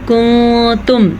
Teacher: لآیۃ لکم، آگے کنتم، نون ساکن کے بعد کاف ہے جو کہ حروف اخفا میں سے ہے، یہاں پہ نون ساکن کے بعد تا ہے جو کہ حروف اخفا میں سے ہے، تو دونوں کو ہم چھپے ہوئے غننے کے ساتھ پڑھیں گے